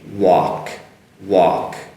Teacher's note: They both end in K, they both end in the K sound. So first on walk, so woo and aw sound and silent L and K, walk, walk.